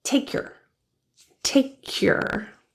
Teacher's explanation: the K in take links to your and your reduces to your in natural speech so instead of